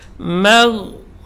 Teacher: huruf mim ini tidak boleh tebal karena pengaruh gha, dia tetap dibaca tipis.